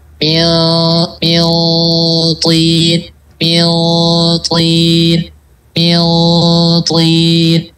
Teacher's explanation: Tinggal diangkat aja pangkal lidahnya agar kedengaran itbaknya si to itu. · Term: ketebalannya